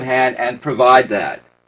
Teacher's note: the final d is a natural link into the th